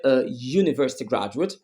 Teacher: don't say an University graduate we say a University graduate because the word university starts with a consonant s sound y even though it starts with a vowel letter that is why I said please focus on the sound not